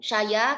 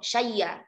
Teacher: Syai'a itu ada dua wajah. Dibaca dengan naql syaya, kemudian dibaca dengan bil ibdal summal idgham syayya.